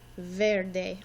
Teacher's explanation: You might notice that the E actually sounds like an A.